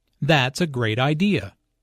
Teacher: Notice the emphasis on great